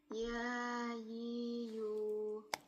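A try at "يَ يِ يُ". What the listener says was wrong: Ya, bukan ya, tapi ya. Dibuka lah, jauh kan makhraj rahangnya. Bukan ya, tapi ya yiyu. Ya yiyu.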